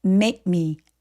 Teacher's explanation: 저 K는 기억 받침 정도로 처리해 주시면 돼요